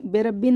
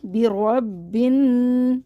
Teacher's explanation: रॉ को बा से मिलाएंगे, बा को नून से मिला देंगे। ये बे नहीं है, बी, बिरब्बिन नास।